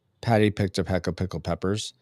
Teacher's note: when you say those P sounds, there's almost a small explosion of air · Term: plosive